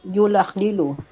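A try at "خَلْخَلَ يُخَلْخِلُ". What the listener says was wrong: Yukhalkhilu. Bukan. Kha dulu baru lam, kha dulu baru lam.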